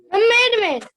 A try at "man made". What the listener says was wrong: मैन मेड, मैड मेड नहीं, मैन मेड।